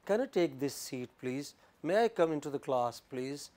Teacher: Usually rising tone is used to make requests, ask polite questions